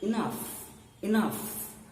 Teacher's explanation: means you are not too stressed you have to unstress so first sound will be a low sound unstressed sound the next sound beginning with n will be a stress sound